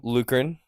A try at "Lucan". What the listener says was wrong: You're adding some syllables in there.